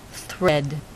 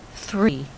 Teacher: These are a little harder because they include another sound, an 'r', so it's a voiceless cluster